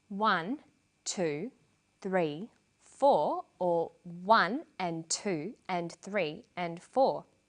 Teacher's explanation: here the words I'm stressing are the numbers 1 2 3 4 the less important words are squeezed in between the beats the